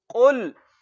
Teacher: होंठों को गोल करके पढ़ना है क्योंकि पेश होंठों को गोल करके अदा होती है, और इसको लंबा करके हमने नहीं पढ़ना।